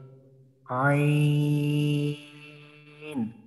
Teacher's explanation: হলকের মাঝখান হইতে উচ্চারিত হয় আইন